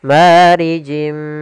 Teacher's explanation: di sini ada kasratain bertemu dengan huruf mim yaitu Idam buna kita masukkan lagi tanwinnya ke huruf mim dan ditahan gunahnya